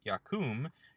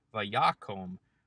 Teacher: You'll also notice that in biconsonantal verbs, the vowel in the hollow space between the two consonants, which appears in all imperfect forms, will actually shorten from an unchangeably long vowel, in this case shurik, yakum, to a short vowel, in this case kametz hatuf, vayakom